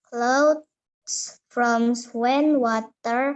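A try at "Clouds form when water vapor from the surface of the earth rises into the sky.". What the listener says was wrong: Bukan from, tapi form. Clouds form.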